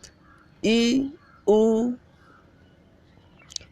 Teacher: जैसे ई और ऊ आप बोलने का प्रयास करो, आप देखेंगे कि जीभ आपकी तालु के काफ़ी नज़दीक ऊपर तक जा रही होगी